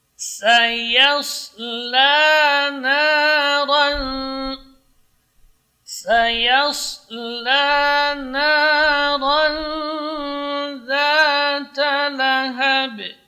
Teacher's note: Sad itu makhrajnya ujung lidah di gigi bawah, sementara gigi seri atas dan bawah ini rapat. Yas, huruf sad termasuk huruf shafir kubra.